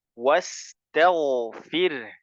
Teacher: sin tipis ya, was tipis, kemudian ta-nya tipis, ta, was, ta tipis, ghainnya tebal ya